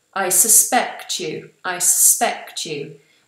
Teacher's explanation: when I make it a verb, I make the first vowel more of a schwa.